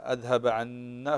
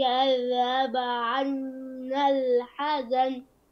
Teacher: فالنون مشدده تغن تغن بمقدار حركتين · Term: النون المشدده